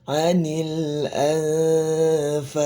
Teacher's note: lam dia punya sifat tawassut ya. Tawassut ya. Suaranya tidak terputus ya. Jadi antara berhenti dan mengalir ya suaranya ya.